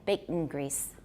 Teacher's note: I've got a syllabic nasal, I've got a glottal stop in there.